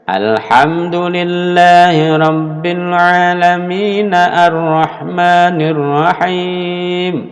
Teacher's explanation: ayat 2 ke ayat 3 itu bunyi A-nya dibuang.